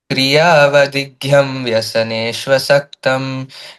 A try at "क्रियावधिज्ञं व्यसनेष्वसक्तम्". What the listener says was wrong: क्रियावधिज्ञम, not Mahaprana here. क्रियावधिज्ञं व्यसनेष्वसक्तम्